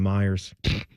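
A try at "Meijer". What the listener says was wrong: There's no S. It's Meyer. There's no S.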